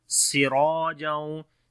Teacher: Sin we read in light sound. Ra and alif both we read in heavy sound, and we long ra with due to alif madda.